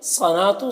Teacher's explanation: صنات، صاد کو پور پڑھنا ہے، یہ حروف مستعلیہ میں سے ہے، نون میں کھڑا زبر ہے، اسے ایک الف کے برابر کھینچ کر پڑھیں گے